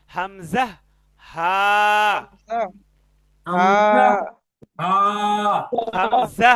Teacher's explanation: হলকের শুরু হইতে উচ্চারিত হয় হামজা, হা